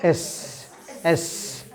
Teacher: এস উচ্চারণ করব তখন কি একটা সাপের মত একটা হিসিং সাউন্ড হবে